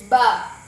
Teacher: As-syafatain huruf yang keluar daripada melalui dua bibir. Dia punya sebutan dekat bahagian dua bibir.